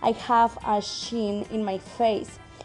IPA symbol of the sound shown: ʃ